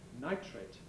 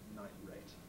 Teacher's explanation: nitrate, the chemical, has an affricate tr, like in try or tree, whereas nitrate, nit plus rate, doesn't, and is likely to have glottalization for the T, or even glottal replacement, nitrate.